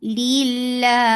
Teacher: Lafz jalala will be light here because there is kasra before it